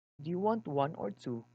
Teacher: Then he answered, it's all right. An alternative question is signaled by the word or and by falling intonation at the end.